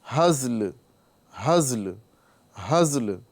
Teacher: زا بھی ساکن ہے اور آخری میں لام بھی ساکن ہو رہا ہے وقف کی وجہ سے ، لہذا اس کو بھی لام کی آواز کو ظاہر کرنا